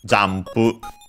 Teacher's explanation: By the way, the m in the middle is actually read as m, because of the following pu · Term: bilabial